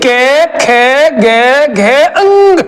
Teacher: के ख ग घ अंग यह सब कहां से बोले जाएंगे कंठ से बोले जाएंगे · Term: क वर्ग